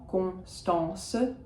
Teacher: For me, they are nasals, the on and the en